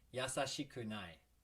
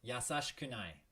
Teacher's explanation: it okay one more time for a good measure yasashikunai and sometimes the s-h-i she can sound like shh